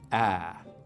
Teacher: So in most accents of English, the vowel sound in words like cat, bag, what we call the trap vowel, is something like ah, right? We make it with the tongue cupped down low and towards the front of the mouth like this.